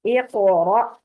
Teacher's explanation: نہیں رکھیں گے، مخرج پہ رکھ کے چھوڑ دیں گے، اقرا، اور قاف کو پر بھی رکھنا ہے ہم نے، باریک بھی نہیں ہونا چاہیے اور قلقلہ بھی نہیں ہونا چاہیے